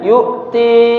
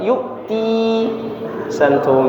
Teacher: Jadi bunyinya jelas a i u ya. Tidak ada bunyi e. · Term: kasrah